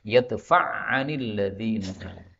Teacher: Kemudian ain ketemu ain, ini idgham menjadi yadfa'anil ladzina.